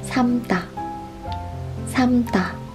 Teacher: The last one, 삶다, which means to steam in English. In this case, we just pronounce this without l sound.